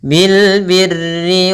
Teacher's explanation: Bil birri, ada alif lam yang merupakan alif lam qamariyah , bunyi lamnya jelas